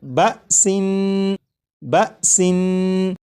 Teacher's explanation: اس لفظ کو جب آپ نے پڑھا جیسے بسن، تو سین کو پڑھتے ہوئے آخر میں جو نون ہے، نون کی ادائیگی کرتے وقت آپ نے غور کیا ہوگا کہ زبان تالو سے لگی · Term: تنوین